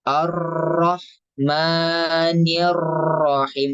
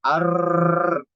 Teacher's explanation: berlebihan dalam sifat takdir Jadi bergetarnya terlalu banyak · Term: berlebihan dalam sifat takrirnya